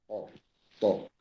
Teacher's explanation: Jadi perut lidah yang memenuhi langit-langit. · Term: itbaq